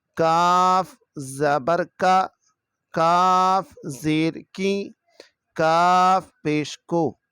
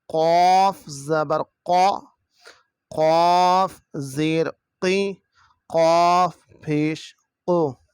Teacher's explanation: کاف باریک ہے اور یہ قاف نقطے والا موٹی آواز میں پڑھا جائے گا